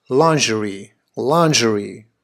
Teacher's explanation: tends to be traditionally the American way of saying it the Brits however prefer to put the emphasis on the first syllable